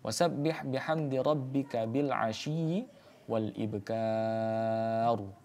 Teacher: Ro yang kemudian dibaca tafkhim karena didahului oleh huruf yang berharakat fathah dan kemudian ada alif ya e alif sehingga madid sukun di akhir kalimat yang kemudian dibaca tafkhim.